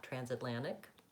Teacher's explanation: what you want is to stress the first syllable. Trans, vowel a.